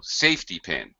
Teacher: Again, with the compound stress pattern, high-low.